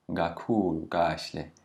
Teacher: when a K does not have an H after it, that it is a bit closer to a G sound. It's almost like a G.